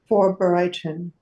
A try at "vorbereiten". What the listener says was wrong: Vorbereiten. So you have a bit of an issue here with the E. It's vorbereiten. You're saying it like blue. Yeah, so try to make it more like an E. Vorbereiten. A little bit, yeah, not a lot.